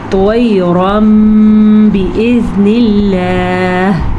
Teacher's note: نون ساکن یا تنوین کے بعد اگر حرف با آ جائے تو نون ساکن کو یا نون تنوین کو میم میں بدل دیتے ہیں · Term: اقلاب کا قاعدہ